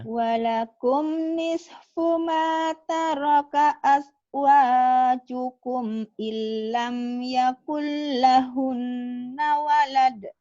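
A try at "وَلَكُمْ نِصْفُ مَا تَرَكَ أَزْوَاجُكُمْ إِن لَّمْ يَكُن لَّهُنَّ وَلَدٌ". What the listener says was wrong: Ya benar.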